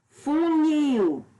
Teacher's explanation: A sílaba nil, que é a última sílaba, é a mais forte. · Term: oxítona